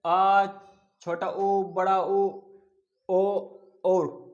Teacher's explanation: अगर पक्ष स्वर को बोल कर देखे तो हमारी जीभ का पीछे वाला भाग काम करता है।